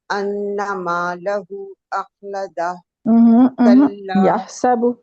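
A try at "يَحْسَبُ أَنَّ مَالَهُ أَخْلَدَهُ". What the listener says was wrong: یحسب چھوڑ گئی ہیں، یحسب ان،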